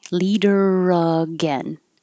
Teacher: Really, the only connection is the R to the A.